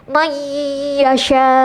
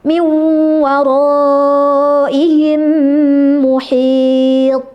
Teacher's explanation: idgham ghunah ini sebagian ke hidung dan disempurnakan oleh mulutnya.